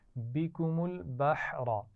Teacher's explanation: بحر ہا باریک ہے، اس سے پیچھے با بھی باریک ہے، لیکن آخر میں را موٹی پڑی جائے گی کیونکہ را پر زبر ہے